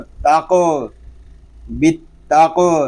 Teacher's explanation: قوف یہ زبان کی جڑ اور تالو کے نرم حصے سے ادا ہوتا ہے، یعنی حلق کے درمیان گوشت کا چھوٹا سا ٹکڑا جو لٹک رہا ہے اس سے ٹکرا کر اس کی آواز نکلے گی.